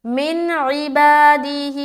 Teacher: نون ساکن اور نون ساکن کے بعد حرف عین آ رہا، تو یہاں پر پھر اظہار کریں گے